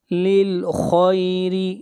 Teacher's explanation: خا کو موٹا پڑھا جائے گا، خا حروف مستعلیہ میں سے ہے، را کو باریک پڑھیں گے، را کے نیچے زیر ہے